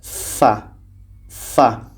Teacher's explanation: gigi seri atas fa fa bibir bawah menempel ke gigi seri atas